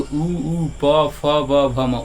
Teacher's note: उ ऊ ओठवा बाहर निकल रहा है ठीक है तो उ ऊ प फ ब भ म ओठे से बोल रहे हैं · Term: ओष्ठ